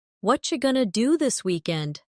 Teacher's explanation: Did you hear how what are you going to became what you going to? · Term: connected speech